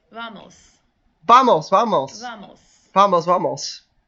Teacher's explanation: the V pronounced as a very soft B sound so not a full hard be like buh but a really sorry almost like if you mixed V and